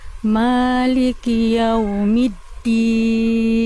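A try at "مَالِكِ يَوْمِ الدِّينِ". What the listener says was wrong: Nah, itu kan ada jangan d. Jangan keluar nafas. Jadi lebih lembut lagi. Lebih ringan lagi. Jangan terlalu kaku, jangan terlalu kuat. Oke, berarti PR Bunda di middin itu ya, middin.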